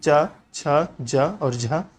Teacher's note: च, छ, ज और झ तालव्य है दोस्तों। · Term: तालव्य व्यंजन